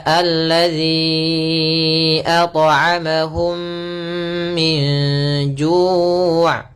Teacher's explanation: Ini cara melafalkannya yaitu suara mimnya masuk kepada yang kedua dan ditahan mimnya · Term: idgam